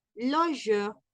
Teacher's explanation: on ne prononce pas le R dans la finale